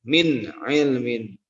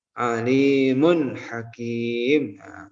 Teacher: Nah, kalau nun sukun ketemu atau nun sukun atau tanwin, baik tanwin fathah, tanwin doma atau tanwin kasroh itu bertemu dengan ke-6 huruf tersebut, maka nun sukun atau tanwin itu wajib dibaca idhar, dibaca jelas. Jadi terasa terdengar huruf N dalam tanwin itu ya baca jelas.